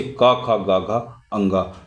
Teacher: का वर्ग की सभी ध्वनि कंठ से उत्पन्न ध्वनि कहलाती है।